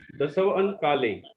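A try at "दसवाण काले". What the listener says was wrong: नहीं इसमें थोड़ा सा, एक मिनट, वा लिखा है ना जहाँ, तो वा में आ की मात्रा सभी लोग लगा देंगे। वा अण, 10 वाण काले, 10 वादन यानी 10 बजे। हाँ 10 बजे के समय में। 10 बाण नहीं, 10 वाण, वा में आ की मात्रा लगा लीजिए। 10 बाण काले, 10 वादन।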